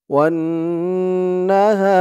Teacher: ওয়াও দিয়ে এই তাসদিদ ওলা নুন ধরবে, এখানে ওয়াজিব গুন্না হবে। হরকতের পরে নুনের উপরে তাসদিদ আসছে, ওয়াজিব গুন্না।